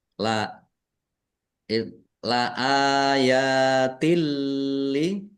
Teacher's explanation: Alif fathah berdiri mat tobi'i, ya fathah berdiri juga mat tobi'i. Dibaca panjang 2 harokat.